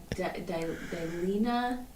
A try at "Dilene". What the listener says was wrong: No A at the end. Dilene.